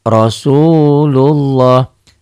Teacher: lafaz Allahnya seakan-akan ini ada W, tapi W-nya jangan nempel, jangan Rasulullah, jangan.